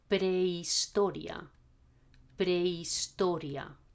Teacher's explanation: In Spanish, we don't hear the H.